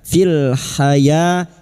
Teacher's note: Fil haya ya alif kecil di atas 2 harakat mat tabi'i. Hayatid lam ta'rif yang bertemu dal idgham syamsiyah.